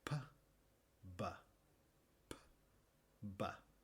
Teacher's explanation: Empezamos con los labios apretados y después los abrimos rápidamente para expulsar aire, pero con p. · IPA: [p] [b]